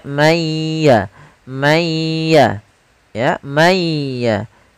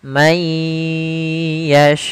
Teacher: cara membacanya masukkan ke huruf ya sambil ditahan gunahnya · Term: idgam ghunah